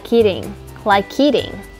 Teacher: khi nói nhanh, chúng ta có thể nối âm k với từ eating